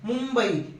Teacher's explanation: याचा सुद्धा अनुस्वारासारखा उच्चार केला जातो म चा उच्चार इथं अनुस्वारासारखा होतो अनुनासिका सारखा होतो